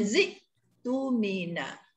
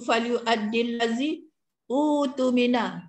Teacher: huruf hamzah itu disukunkan bacaannya dan huruf hamzah wasal itu pula diabaikan